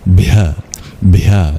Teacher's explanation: It's no silent H. This is truly voiced with extra breath.